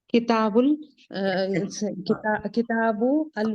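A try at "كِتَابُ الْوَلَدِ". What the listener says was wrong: किताबुल अल वलदी के, देखें, जब आपने किताबु कह दिया तो आपने अलवलदी नहीं कहना, किताबुल वलदी। वो तनवीन हमने क्यों हटाई है? तनवीन के साथ हम जोड़ नहीं सकते, इसलिए तनवीन हटाई है हमने।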